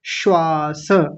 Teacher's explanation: और यहां देखिए श्वास श्वास कैसे लिखा हुआ है? ऐसे तालव्य शकार आधा है। दंत्य सकार पूरा है। दोनों का उच्चारण अलग-अलग आना चाहिए।